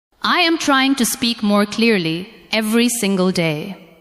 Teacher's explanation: As you say the sentence, give a little more stress to the words trying, speak, clearly, and day. Let the other words stay softer and lighter.